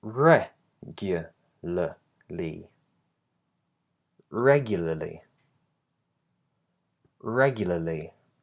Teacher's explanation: So the stress is on the first syllable, regularly. · that r is completely silent in standard British English, and it's just l, l. Really, really short, really unstressed.